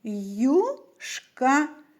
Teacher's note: у слові юшка правильноч а звуків п'ять а чому Тому що літера ю позначає не один а два звука звукосполучення й у в якому й приголосний завжди м'який